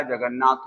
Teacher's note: और प्लस नाथ। तो जब यहाँ पर ये दोनों मेल खाए, ता का मेल ना से हुआ तो ये आपका ता ना में बदल गया